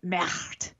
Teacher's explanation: a uvular R, which is made at the back of throat like a Parisian R